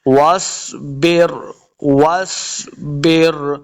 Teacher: سواد حروف مستعلیہ سے اس کو موٹا پڑھنا ہے